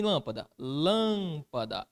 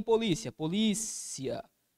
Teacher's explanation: É aquela palavra cuja sílaba tônica ocupa a antepenúltima posição. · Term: proparoxítona